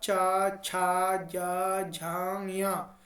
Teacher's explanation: इन सभी में आप देखो जीव जो है आपके ऊपर तलवे से लग रही होगी तो इस वजह से ये तालव्य व्यंजन बोले गए हैं